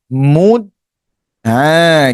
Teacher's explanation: letak bagi tepat Hujung lidah pada pangkal gigi kacip atas. Makhraj bagi huruf dal. [berdeham] Kemudian di ada bunyi pelet sikit. · Dal antara sifatnya yang menonjol di sini iaitu syiddah, tertahan suara.